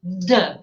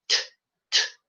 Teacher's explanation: A única diferença é vozeamento e não vozeamento.